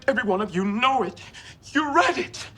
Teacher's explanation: Weakening into soft, breathy pleading